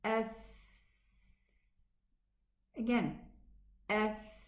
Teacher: with the hams, with the whispering character, the vocal cords do not vibrate. So if we put our finger against the throat, and let's pronounce the letter tha, ath.